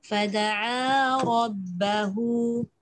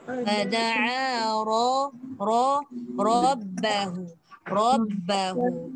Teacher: Yang pertama fada'a rabbahu, ra dibaca dengan tebal